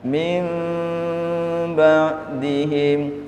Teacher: bibirnya tidak rapet tidak nempel 100%